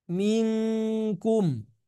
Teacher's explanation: jadi lebih ke eng betul-betul eng ya jadi pekat sekali bunyi eng-nya